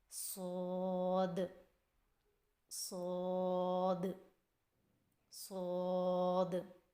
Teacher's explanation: صاد کی ادائیگی میں زبان کی نوک کو سامنے والے نیچے کے 2 دانتوں کے کناروں سے مضبوطی سے لگا کر اور زبان کے پچھلے حصے کو تالو کی طرف بلند کرتے ہوئے موٹی اور سیٹی جیسی آواز میں پڑھیں